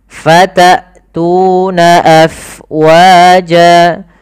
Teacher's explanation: Kemudian hamzah fatatuna, jelaskan suara hamzahnya karena dia punya sifat yang mencolok, yaitu jahar dan syiddah